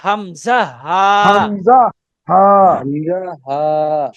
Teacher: হলকের শুরু হতে উচ্চারণ হয় হামজা হা